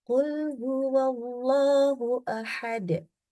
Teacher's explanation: Jadi kita ada caranya membaca Allah itu dengan ditafhimkan atau ditebalkan naikkan pangkal lidah · Kul huwa ketemu Allah. Wawu harokatnya fathah. Maka baca Allahnya ya tebal.